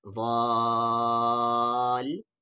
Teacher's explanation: زاد کو کھینچتے ہوئے 5 سے 6 الف کے برابر کھینچتے ہوئے لام میں ملا دیں گے